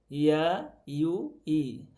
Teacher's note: ইয়াটা একটু পিছন থেকে কি লাগার কাছাকাছি হয়, লাগে না সম্পূর্ণ।